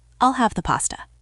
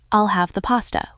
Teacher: Notice how 'the' weakens in fast speech. It becomes more like I'll have the pasta with less stress on the.